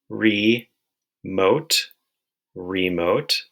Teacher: The first syllable, re, is open, which means the vowel sound is long. And the second syllable, mote, it has the O consonant E spelling, which makes for a long O sound.